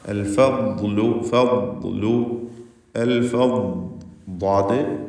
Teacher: നാവിൻ്റെ സൈഡും മേലെ അണപ്പല്ലും ചേർത്തുകൊണ്ട് ഉച്ചരിക്കുന്ന അക്ഷരം. അതിന് തഫ്ഖീമുണ്ട്, തഫ്ഖീം ചെയ്യേണ്ട ഇസ്തിലാൻ്റെ ഹർഫാണ്. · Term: ദ്വാദ്